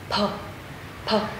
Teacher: mình không đọc là phờ giống như của Việt Nam mình, mà mình bật hơi